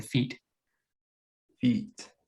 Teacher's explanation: the tongue is very forward smashed up almost against the roof of your mouth